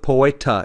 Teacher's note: it's an unaspirated tea no breath really comes out of your mouth · the tea is much softer in spanish than it's going to be in english